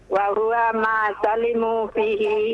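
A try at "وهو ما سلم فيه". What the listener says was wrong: Bukan afwan. Bukan salimu ya. Salima itu fi'il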